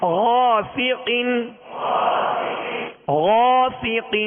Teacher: اس الف کو پر پڑھیں گے، اس لیے کہ الف سے پہلے والا حرف پر ہے